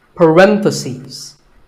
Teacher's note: just one bracket you say parenthesis the stress is on ren if you're talking about both the plural is parentheses the last syllable becomes seas